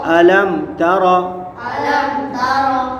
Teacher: میم ساکن کے بعد تا آ رہا ہے تو یہاں اظہار شفوی ہوگا، یعنی غنہ نہیں کریں گے۔